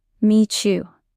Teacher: In meet you, the T changes to a ch sound.